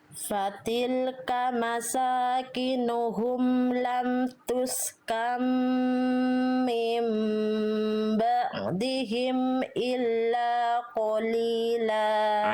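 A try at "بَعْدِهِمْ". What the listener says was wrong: Ainnya kurang tekan bunda. Ba'di.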